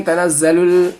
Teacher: लाम को लाम से मिला देना है, लाम में जज़म है, जज़म वाले हुरूफ को पिछले वाले हुरूफ से मिला देते हैं जैसे कि, और जो बीच का खाली हरफ आता है उसको हम लोग नहीं पढ़ते हैं.